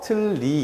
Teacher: 두음 법칙이 적용된 자리가 아니고 그런데 리을과 니은이 만나면 니은이 유음화가 되기 때문에 얘가 리로 바뀌게 돼요